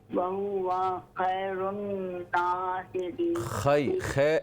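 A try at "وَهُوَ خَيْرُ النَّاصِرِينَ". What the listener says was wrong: خیر غلط ہے، خا یا زبر خی، وہو خیر الناصرین۔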